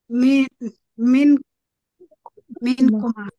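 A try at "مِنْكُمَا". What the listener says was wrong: মিন কুমা। মাত করতে হবে, কুমা না বললে তো হবে না, বা মাত করতে হবে। হ্যাঁ, মাত না করলে তো দ্বিবচন হচ্ছে না।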